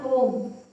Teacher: ओम दोस्तों हमें बोलने में एक मात्रिक स्वर से 3 गुना समय लगा। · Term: प्लुत स्वर